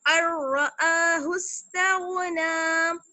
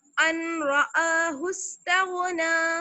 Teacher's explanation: हमजा को रा से मिला दिया, रा मुशद्दद से मिला दिया, बीच में नून साकिन की आवाज जो है वो बिल्कुल गायब हो गई, अर्रआहु इस्तगना।